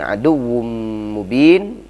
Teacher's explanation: tanwin ketemu dengan mim maka dihukumi dengan idgham bi gunnah, ya, panjangnya sama dengan gunnah musyaddadah yaitu 2 harakat atau lebih. Kemudian mubin baru ketemu dengan man alid disukun.